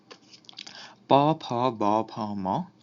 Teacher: এগুলো হচ্ছে দুই ঠোটের মিলিত উচ্চারণ